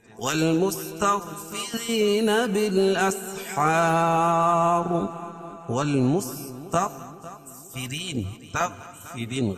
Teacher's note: را کے نیچے زیر ہے اور یا ساکن سے پہلے را کے نیچے زیر ہے. یا مدہ اس کو ایک الف کے برابر کھینچ کے پڑھیں گے. بالاسحار بالاسحار وقفہ کی صورت میں یہ مد عارض وقفیہ ہوگا.